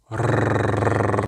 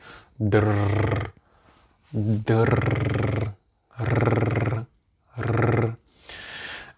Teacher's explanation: the way you pronounce it in Russian is you roll it. So you say rrr.